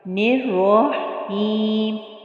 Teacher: را کے اوپر پھر زبر ہے تو اس لیے اس کو پر موٹا پڑھیں گے